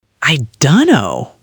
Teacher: I do not know often becomes I do know. We completely drop the do and blend the rest together.